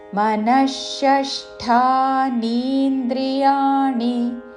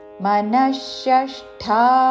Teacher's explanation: విసర్గ తరువాత మూర్ధన్య షాతో పదము మొదలవుతున్నది కాబట్టి విసర్గ ఉచ్చారణ మూర్ధన్య ష మనఃషష్ఠ అనకూడదు షష్ఠా మనఃషష్ఠా నీంద్రియాణి ణి హ్రస్వము చివరిలో మనఃషష్ఠానీంద్రియాణి ప్రకృతిస్థాని కర్షతి